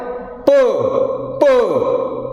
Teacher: the P is called voiceless bilabial plosive, because you studied what is plosive sound, and you also studied what is bilabial sound.